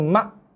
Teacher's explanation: Bukan ma' dia kena ma'. Hamzah ni keras. Ma' solid bunyi dia.